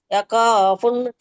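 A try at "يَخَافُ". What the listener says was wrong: దమ్మతే లేదు ఫ దమ్మ ఒకటే ఉంది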